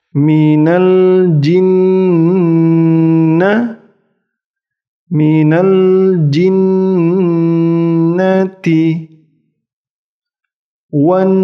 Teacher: Nun tasdid di sini saya lupa mewarnai. Nun tasdid didengungkan 3 harokat